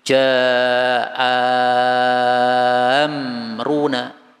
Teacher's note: jadi jadi e panjang sekali enam Saya ulangi lagi ja amruna ja empat harakat karena dia adalah mad wajib untuk Ibnu Katsir